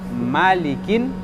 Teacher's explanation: Tapi ini ma-nya tidak panjang. Malikin. Pendekkan ma-nya.